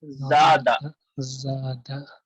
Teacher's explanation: الف سے پہلے زبر ہے اس لیے زا کو کھینچ رہے ہیں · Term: الف مد